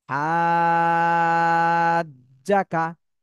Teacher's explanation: কিন্তু আমরা দেখতেছি উপরে চার আলিফের চিহ্ন রয়েছে, এই জন্য বানানের সময় হা জিম জবর এটা বলতে হবে, কিন্তু উচ্চারণ করার সময় আগে চার আলিফ টান দিয়ে তারপরে জিমকে ধরতে হবে।